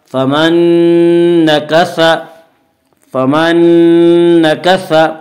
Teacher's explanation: نون ساکن کو نون سے ملا کر غنہ کے ساتھ پڑھیں گے اور اسے ادغام مع الغنہ ادغام ناقص کہتے ہیں۔ فمن نون